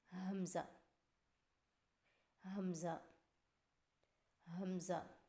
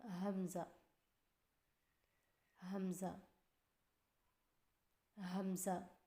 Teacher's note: حمزہ کی ادائیگی میں ہا کو بغیر کھینچے میم کے ساتھ ملائیں اور میم کی آواز میں لمبا نہ کریں